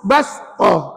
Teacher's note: ayat ini sebelum sin tu adalah huruf ba tu nipis. Jadi sin tu nipis.